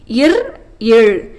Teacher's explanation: மேல்வாயை நாக்கின் நுனி வருடுவதால் பிறக்கும் மெய் எழுத்துக்கள்